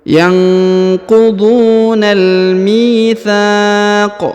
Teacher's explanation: Huruf mi dipanjangkan 2 harokat karena di depannya terdapat ya sukun.